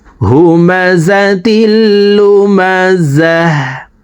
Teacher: গুলতা ওয়াকফের ক্ষেত্রে হার উচ্চারণ করব এবং হাকে সাকিন করে ফেলবো।